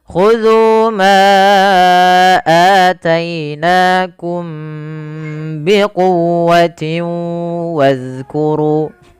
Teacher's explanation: Kemudian ada mim mati bertemu ba, maka di sini kita hukumi dengan bacaan ikhfa syafawi. Suara mimnya ditahan karena dia bertemu dengan ba. Yang mana mim itu kan makhrajnya daripada bibir kita, ba dari bibir kita. · Suara mimnya ditahan karena dia bertemu dengan ba. Yang mana mim itu kan makhrajnya daripada bibir kita, ba dari bibir kita. Maka ada 2 huruf yang berdekatan makhraj ini, kita tahan mimnya karena bertemu dengan ba.